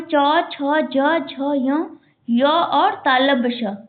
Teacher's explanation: च वर्ग और य और तालव्य श का उच्चारण स्थान कहां है? ताल्लु।